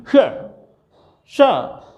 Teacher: जब श बोलेंगे वो सबसे पीछे जीभ मूर्धन्य में जाएगी